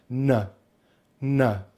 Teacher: Now to make the N consonant sound all you do is you take your tongue, you've got the tip of the tongue touches the roof of the mouth and releases for the N sound, and just make sure you have some air passing through the nose